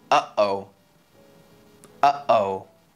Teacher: You might notice that there's a little stop between 'uh' and 'oh'. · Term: glottal stop